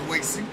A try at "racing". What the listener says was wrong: I'm sorry, did you just say racing? Sound like you said racing with a W.